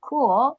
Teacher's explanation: cool is like U plus U sound. It's very difficult to hear the last L. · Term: dark L